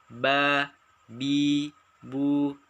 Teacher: Yang kedua, dua bibir tertutup. Ada huruf ba dan huruf ma.